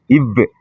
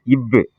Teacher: கீழ் இதழும் மேல்வாய் பல்லும் இணைவதால் பிறக்கும் எழுத்து